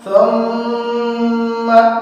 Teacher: মিম এবং নুনের উপর যখন তাসদীদ থাকে তখন আমরা তাকে গুণনা করে পড়ি। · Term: ওয়াজিব গুণনা